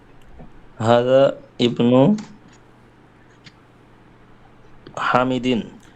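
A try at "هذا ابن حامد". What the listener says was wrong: হ্যাঁ, এখানে আপনাকে মিলায় পড়তে হবে আগের সাথে।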